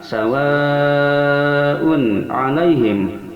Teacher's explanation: idhar, dikarenakan tanwin domah menghadapi ain yang termasuk salah satu huruf idhar yang 6, hamzah ha pada pangkal tenggorokan, ain ha pada tengah tenggorokan, kha ghain dan pada ujung tenggorokan, itulah huruf idhar.